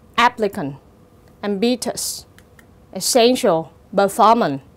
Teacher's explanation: Như vậy từ applicant dấu nhấn rơi vào âm tiết thứ nhất. Còn lại những cái từ ambitious, essential và performant thì dấu nhấn rơi vào âm tiết thứ hai